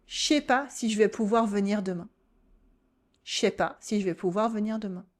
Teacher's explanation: Start blending words together. Drop the ne from negations. Compress your pronouns. Let words flow into each other. Instead of je ne sais pas si je vais pouvoir venir demain, I don't know if I will be able to come tomorrow, you can say je sais pas si je vais pouvoir venir demain.